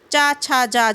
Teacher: जैसे चा वर्ग, चा, छा, जा, झा, ये तालु से स्पर्श हो रहा है ना, तालु से बोले जाते हैं